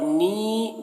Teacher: नीन को ज़्यादा खींचेंगे यहाँ पर, क्योंकि यहाँ पर मद्द आरिज़ वक्फ़ी हो रहा है।